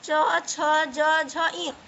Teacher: च वर्ग को तालु से बोला जाता है।